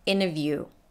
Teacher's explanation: native speakers usually drop the t that comes after an n